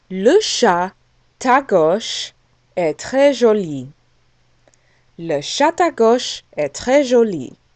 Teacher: we pronounce the T at the end of chat with the A that begins à gauche. Okay, we don't say le chat à gauche. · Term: liaison